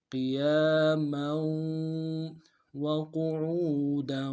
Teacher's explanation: تنوین کو آگے واو کے سامنے لانا ہے، واو کے اوپر تشدید زور دیں گے، تنوین میں غنہ کریں گے